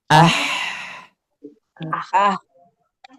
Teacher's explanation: Ada nafas keluar. Berarti kalau di sini ha memilih sifat hames